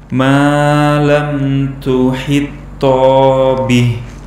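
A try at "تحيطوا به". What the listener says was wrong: Tanya tidak panjang ya. Tuhito bih langsung. Ini tak dan tok, dia satu makhraj tapi beda sifat. Yang satu ada anginnya, tati tu. Kemudian yang toknya tidak berangin, toti tu, begitu.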